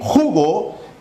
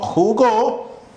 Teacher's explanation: Al decir jugo, tenemos aquí a nuestro acento en ju. Y si digo jugó, tenemos nuestro acento en go. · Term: acento prosódico